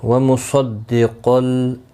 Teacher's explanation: دال پر تشدید ہے، تھوڑا سختی کے ساتھ پڑھیں تاکہ تشدید ظاہر ہو · وَمُصَدِّقًا، صاد مستعلیہ ہے، قاف بھی مستعلیہ ہے، پر پڑے جائیں گے دونوں